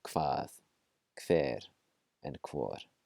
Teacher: There are some parts of Iceland that will pronounce it slightly differently, but mainstream Icelandic just KV sound